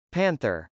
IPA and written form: pˈænθɚ (panther)